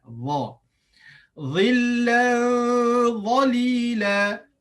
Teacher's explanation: Dha hujung lidah di atas, bahagian atas. Dha, tapi bersifat isti'la, dia tinggi, terangkat lidah. Dha, bukan za.